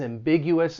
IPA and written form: æmˈbɪg yu əs (ambiguous)